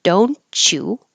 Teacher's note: What parda, I don't have to say of, I can say parda, that, don't say the T. Don't you, the T and the Y next to each other will make a chew.